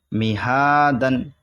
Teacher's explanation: یہاں پر دال پہ زبر کی تنوین کا الف آ رہا ہے اس کو نہیں پڑھیں گے